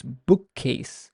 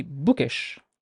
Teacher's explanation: join them together and say them in one line it's bookcase the k sound is stressed is prolonged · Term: double consonants